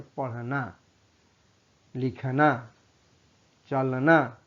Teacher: जब शब्द के अंत या मध्य के व्यंजन में अ का पूर्ण उच्चारण नहीं होता है तो वहां पूर्ववर्ती अक्षर पर बलाघात होता है। जैसे पढ़ना, लिखना, चलना, तो पूर्ववर्ती वर्ण पर, शुरू वाले वर्ण पर बलाघात हुआ।